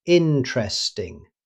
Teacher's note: Rather than saying every syllable, native speakers usually pronounce it interesting. The first E after the T simply disappears.